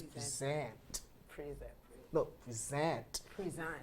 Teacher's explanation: when it's a verb, the stress falls on the second syllable and the sound completely changes